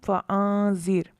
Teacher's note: کم فانذر، یہاں بھی را ساکن ہے، زال پر زیر جو ہے اسی کلمے میں ہے اور اصلی ہے، اس وجہ سے را کو باریک پڑھا